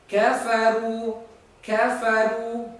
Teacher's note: kafaru di situ ada harokat dhammah, ya, harokat dhammah, kemudian ada waw mati. Ya, maka bibir kita dimonyongkan